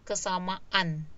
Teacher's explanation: Ada kata dasar sama ketemu dengan sufiks an, jadi ada glottal stop.